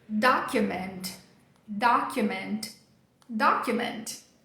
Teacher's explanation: em inglês ele faz um som de I. É um som de I curto que rapidinho ele já vira o próximo som. Então, a gente vai fazer uma transição aqui bem rápida, ó, é ia.